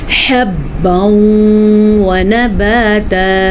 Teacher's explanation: یہاں پہ ادغام بالغنہ ہو رہا ہے، ضرور آپ نے غنہ کرنا ہے